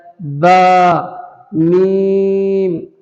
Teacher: دونوں ہونٹ مل کر، دونوں ہونٹ جب ملائیں گے تو اس سے با اور میم دونوں ادا ہوتے ہیں،